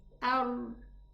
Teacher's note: This is the the down part of the tongue that we can see. So I strike the tongue, the tip of the tongue just behind the gum, a little bit behind the gum of those upper two teeth. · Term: raw